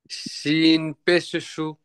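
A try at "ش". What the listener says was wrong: এটা সিন না, এটা শিন, শিন।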